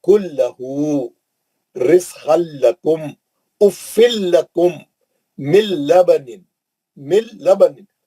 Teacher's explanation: नून का शायबा तक नहीं रहना, नून की बो भी नहीं आना, नून का पता पता अता पता कुछ नहीं रहना, गायब, वो इदगाम कर लिया, सख्ती से लाम और रा के अंदर चलेगा, नहीं पढ़ेंगे, गुन्ना नहीं करेंगे, जल्द लाम और रा से ही पढ़ेंगे। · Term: इदगाम बिला गुन्ना